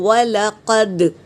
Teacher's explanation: بہت سی بہنیں کھینچ کے پڑھتے ہیں، وَلَقَدْ اس طرح پڑھتے ہیں، کتنا گندی طریقے سے پڑھتے ہیں، جبکہ واو لام اور قاف پر حرکت ہے اور دال پر سکون ہے، تو یہاں پر قلقلہ ہوگا، تو وَلَقَدْ اس طرح پختگی سے پڑھنا ہے۔